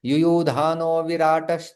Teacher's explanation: विसर्ग एक ओ में परिवर्तित हो जाता है और यहां पर श आ जाता है। युधानो विराटस युधानो विराटस